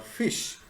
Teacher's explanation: If someone puts his open hand in front of his mouth, which making these sounds for and saw in particular, he should be able to feel the stream of the air being pushed out. The usual pronunciation of the word fish begins and ends with the voiceless fricatives